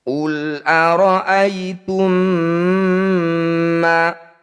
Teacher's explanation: Cara bacanya mim pertama masukkan pada mim kedua, kemudian dengungkan 2 harokat. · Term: idgham mimi